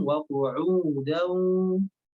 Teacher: U-nya panjangkan dulu, Bu. Agak sedikit panjang.